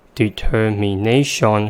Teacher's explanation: the vowel in the first syllable reduced to the second schwa sound and the vowel in the last syllable reduced to the first schwa sound because they are both in the unstressed syllables